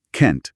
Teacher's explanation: can't es fuerte, necesita marcar la negación y se pronuncia can't, con una vocal más abierta, más larga y a menudo una T final clara y explosiva